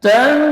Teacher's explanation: berarti nunnya samar, masih terdengar namun samar dan dibaca tipis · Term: ikhfa